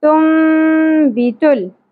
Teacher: حرف با اقلاب کا رول ہوگا جس میں کیا ہوتا ہے نون ساکن کی اواز کو میم میں بدل کر پڑھتے ہیں